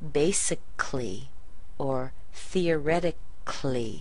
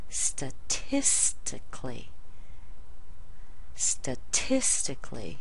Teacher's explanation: in American English when you say that we don't even pronounce the a in words that have c a l l y